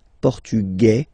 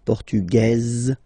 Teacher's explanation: masculine portug you don't pronounce the S feminine form portuges you pronounce this Z sound